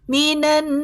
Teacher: nun bertasdid gunah musyadadah dengung sempurna